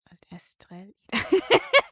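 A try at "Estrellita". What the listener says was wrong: It's estre. You got that one right? And then ita. Exactly. No L sound.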